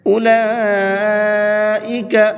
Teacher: لام کے اوپر بڑا مد ہے، اس کو 4 سے 5 الف کی برابر کھینچ کر کے پڑھیں گے۔